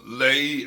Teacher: Sometimes Lehi is, as we've said before, is pronounced with one syllable, Lehi, or a diphthong type of pronunciation after the L